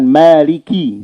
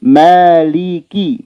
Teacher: Kalau kaf ada hembusan secara natural. Akan ada hembusan maliki, coba.